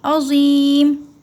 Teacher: زو جو ہے زو وہ موٹا پڑا کرے منہ بھر کے